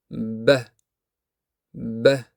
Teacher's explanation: uni talaffuz qilganda lablar yopilib ichkarida havo to'planadi. Soʻng lablar birdan ochilib havo chiqadi va ba tovushi hosil bo'ladi. Shu sababli bu tovush portlab chiqqandek eshitiladi.